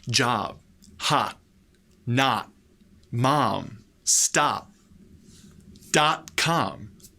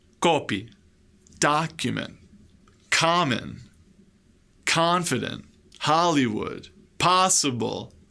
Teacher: the letter O is pronounced with the sound ah the same sound as we use in Spanish for the letter A